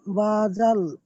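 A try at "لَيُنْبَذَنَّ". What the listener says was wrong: বাজাল না, জাল, নুন জবর জান, বাজান না, এটা নুন আছে।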